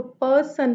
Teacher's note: noun में first syllable पे stress होगा